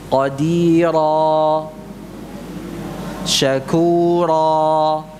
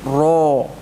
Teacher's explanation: Jadi banyak yang mengucapkan ra ini dengan mencucu bibirnya, ya, khususnya ra yang berharakat fathah, ra, ya. Ra yang berharakat fathah diucapkan tanpa mencucu bibirnya